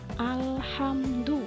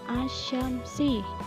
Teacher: Jadi kalau al-qamariyah alnya terbaca dan asyamsiyah alnya tidak terbaca.